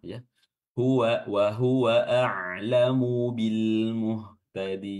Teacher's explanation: Ini bertemu maka mimnya ini disekunkan haam Muhtadin untuk mempermudah pembacaannya karena mim dan ba ini merupakan satu makhraj di syafatain